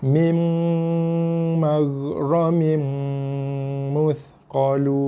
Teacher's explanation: Bibir tu perlu ditekan. Kedua-dua bibir atas bawah tu kena tekan dan dengung. 2 harakat ataupun lebih. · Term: mim sabdu